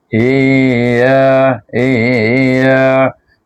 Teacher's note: Padahal kita nampak huruf ya satu saja. Tapi kita baca juga macam baca bacaan mad dia tu namanya mad tamkin.